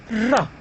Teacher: if you pronounce the R you will say ra, and as such the tip of the tongue is pressed against the alveolar ridge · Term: alveolar approximant